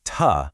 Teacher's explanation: the kid is taking that long hissy s sound and swapping it for a short hard t sound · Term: stopping